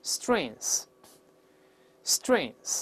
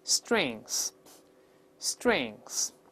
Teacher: 后面是个舌根音▁ng▁在一块，舌根拱上去 ▁a▁in▁in▁in▁这么个声音，先发▁a，▁舌根拱上去堵住喉咙▁in▁在里面▁strings▁strings。▁哎，这个词跟▁weakness▁相对应的时候表示优点或长处，这个意思啊，它也是可数名词。注意▁strength▁如果表示力量可以当不可数名词来用，但表示优点长处是可数的。固定搭配就是▁strengths▁and▁weaknesses，▁就是优点和缺点，优缺点啊，注意两个前后都是这个固定，用复数这个名词就好了。同样咱们看看这个奥巴马